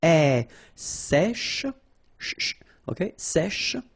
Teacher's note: accent grave here, so it's really open.